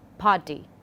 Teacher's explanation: the p sound is bilabial, stop and voiceless